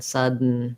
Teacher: And the N in this word is a syllabic N. So when I say sudden, I just basically move directly from the D to the N.